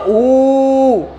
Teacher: जब ऊ बोलते हो ऊ, तो बेटा इसमें दो छोटे ऊ मिलकर बने हुए हैं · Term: बड़ी ऊ